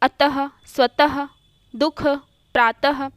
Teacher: यह अनुस्वार की भांति स्वर के बाद आता है तथा यह उच्चारण में ह की तरह होता है। यह कंठ के अधीन आता है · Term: विसर्ग